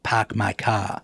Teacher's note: a notion you mentioned of dropping the R called non-rhotic